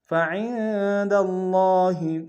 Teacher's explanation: عرض الحیاة الدنیا فعند اللہ، عین میں عین کو نون کے سامنے آئیں گے، نون ساکن غنہ کریں گے